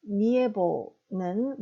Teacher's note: 이, 에, 오 세 개가 아니라 모음은 에, 오 두 개밖에 없습니다. 즉, 에 앞에 나와 있는 이는 자음과 연결돼서 니, 연음인 것입니다.